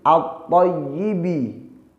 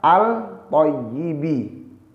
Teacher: At-thayyibi langsung dimasukkan, diidghamkan, tidak dibaca al-thayyibi. Cara bacanya ialah at-thayyibi. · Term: idgham syamsiyah